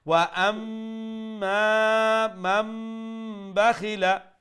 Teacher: এখানে মিম মুশাদ্দাদের প্রথম হলো গুন্না, আর তারপরে মা আলিফ আছে এখানে মাদ্দা, অর্থাৎ লম্বাও করতে হবে, প্রথমে গুন্না করব তারপরে লম্বা করবো এক আলিফ। ওয়া আম এই পর্যন্ত আপনার গুন্না হয়ে গেছে।